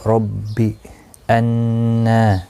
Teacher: را زبر کی وجہ سے پر پڑھا جائے گا. ربی انا، نون مشدد پر غنہ ہوگا.